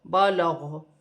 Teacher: وقف کی صورت میں زبر گر جائے گی اور غین ساکن ہو جائے گی، اور وقف کی صورت میں غین کی ہلکی سی آواز آئے گی